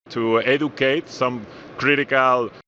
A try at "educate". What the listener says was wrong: Educate, educate. So that D is a J sound. Educate, educate.